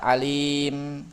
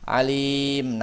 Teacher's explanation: Kalau sakta alim tidak bernafas. Kalau waqaf alim nafas dulu gitu.